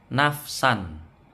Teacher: san di sini ketemu alif tidak boleh dengung. Bacaan idhar halqi ini.